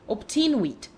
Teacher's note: logic demands that the second letter should be a b, while to the ear the sound is rather that of p